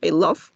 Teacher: no es como una O en español. Es más como una E volcada. Entonces va a ser más cerrado.